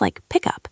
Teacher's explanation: The K sound at the end of pick moves over to the word up.